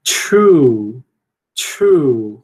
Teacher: Quando você tem um T e um R, você tende a palatalizar um pouquinho, certo? True.